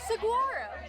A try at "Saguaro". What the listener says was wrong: I think it's Saguaro. Yeah, I think we keep pronouncing it wrong. I think the G is more of like a W sound.